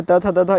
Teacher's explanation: दंतव्य व्यंजन होता है क्योंकि दांत टच होता है जीभ के साथ